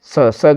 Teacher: स का उच्चारण स्थान है तालु।